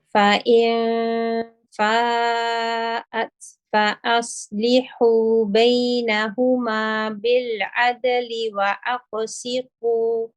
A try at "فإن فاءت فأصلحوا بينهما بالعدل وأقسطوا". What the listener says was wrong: Okay, so your qaf, the qalqala can be heavier. فأصله, again, we're seeing a pattern now. Rakhawa letters, when they have a sakin, you seem to have a tendency of breaking after it. Okay, so stay on the sad, smoothly onto the lam.